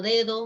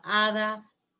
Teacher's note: Si, por ejemplo, en todos los casos en los cuales el sonido oclusivo dental, en todos los casos en que ese sonido dental aparece entre vocales, siempre aparece debilitado como D, como fricativo.